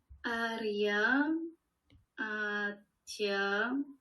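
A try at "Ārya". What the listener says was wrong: Bravo.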